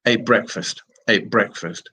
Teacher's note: the T changes into a p in order to make the pronunciation easy